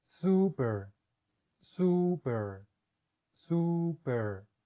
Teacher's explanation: este sonido es igual al español solamente alarguen lo un poco cuando tenga los dos puntos